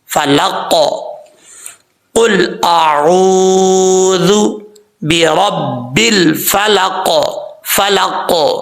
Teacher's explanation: اب کا لاسٹ پہ ہے قاف، اکثر لوگ کیسے پڑھتے ہیں فلق، فلق، ایسا نہیں پڑھنا، غلط ہو جاتا ہے کیونکہ قاف بریک پڑھا جاتا ہے، یہاں پر قاف جو دو نقطوں والا ہے موٹا پڑھا جائے گا۔ تو پڑھتے ہوئے، کیونکہ قاف حروف مستعلیٰ میں سے بھی ہے اور حروف قلقلہ میں سے بھی ہے، حروف قلقلہ جب ساکن ہو تو ان میں وقف قلقلہ کیا جاتا ہے، تو یہاں پر قاف قلقلہ کے ساتھ پڑھیں گے، فلق، قل اعوذ برب الفلق، فلق۔